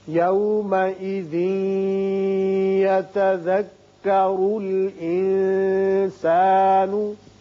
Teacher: یہاں ادغام بغنہ ہوگا اس لیے کہ تنوین کے بعد یا ہے، را کے اوپر پیش ہے، اس کو پر پڑھیں گے، اس نون پر اخفا کریں گے.